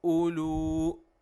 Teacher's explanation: without stretching the Hamza at all with Waw, because waw is not a mad letter, waw is silent in this word